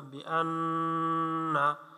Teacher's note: হরকতের পরে নুনের পরে তাসদীদ, এজন্য ওয়াজিব গুন্না